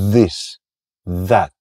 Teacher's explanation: Elikkä se tarkoittaa sitä, että estetään ilmaan tulemista tuolta keuhkoista äänihuulten kautta ja suusta siten, että laitetaan kieli hampaiden väliin ja estetään sitä ilmaa tulemasta, niin tänne kurkkuun muodostuu sointu. Tämmöönen tärinä värinä. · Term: soinnillinen